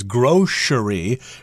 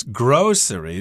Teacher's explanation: I heard my mother often pronounce this word as grocery with a sh sound in there, but the dictionary says it's grocery, so maybe my mother was saying it wrong all along.